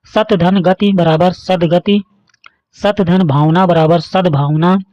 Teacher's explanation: त का उच्चारण द में बदल जाता है